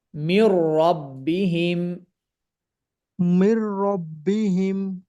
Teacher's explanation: গুন্নার মাধ্যমে ওয়াসেতা না করে সরাসরি ইদগাম করা, সরাসরি মেলবন্ধন করা। ঠিক আছে, সরাসরি মিলে যাওয়া। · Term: ইদগাম বিলা গুন্নাহ